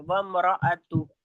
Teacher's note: हा को साकिन करके ता को हा से मिलाएंगे